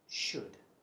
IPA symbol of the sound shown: ʆəd